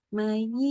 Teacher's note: ya semua nih Jangan lupa ditekan-tekan mayi ya jangan May ya jangan m a i ya tapi m a y i ya pastikan itu huruf ya terbunyikan